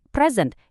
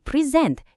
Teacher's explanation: Dan uniknya tekanan ini sering banget bergeser tergantung kelas katanya. Kalau kata benda, tegangannya ada di depan kayak present yang artinya hadiah. Tapi pas jadi kata kerja tegangannya geser ke belakang jadi present yang artinya mempresentasikan.